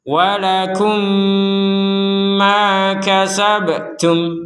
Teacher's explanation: maka mim sukun yang pertama ini kita masukkan kepada mim yang kedua sehingga menghasilkan dengungan, sehingga menjadi satu mim. Artinya jangan sampai kita membaca mim yang pertama lagi. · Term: mim sukun bertemu mim